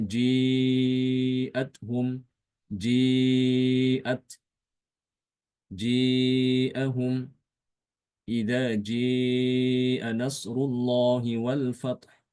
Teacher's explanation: Imam Ibnu Takqwan mengimalahkan setiap kata jaa dan syaa yang ada di dalam Al-Qur'an